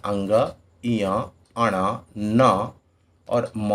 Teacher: इनके उच्चारण में हवा जो होती है वो नाक से निकलती है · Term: नासिक के व्यंजन